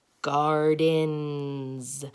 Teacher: not the S sound is because this n sound is voiced when the n sound is voiced the S sound gets voiced and makes the Z sound